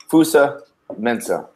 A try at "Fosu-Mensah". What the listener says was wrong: Fosu. Fosu. Yes, Fosu Mensah, not Fuso.